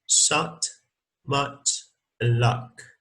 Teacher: the lip position is neutral rather than spread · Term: open central vowel